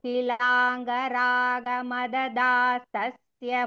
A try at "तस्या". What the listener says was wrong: தஸ்ய இல்ல, தஸ்யா தீர்கா அது.